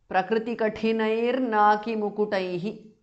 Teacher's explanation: Visarga changes to r or repha.